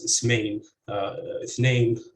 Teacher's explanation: So in 2, the words on the left are typically pronounced as ismain, ithnain, with stress on the second syllable